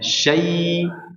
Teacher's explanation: diberikan 2 harakat pada lin ya